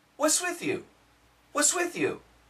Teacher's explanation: when there's an S next to a T you can eliminate the T sound so you get wha Swit whew this th sound connects what's